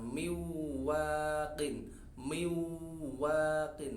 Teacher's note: Mestinya asalnya min, akan tapi ketemu wawu, maka suara nun sukun terlebur ke wawu